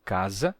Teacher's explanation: no meio de duas vogais ele se sonoriza se torna Z